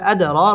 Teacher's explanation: দাল কলকলার হরফ ধাক্কা দিয়ে পড়তে হবে আদর র পুর হবে এবং খারা জবর এক আলিফ টান দিয়ে · র পুর হবে এবং র খারা জবর, এক আলিফ টান দিয়ে পড়তে হবে।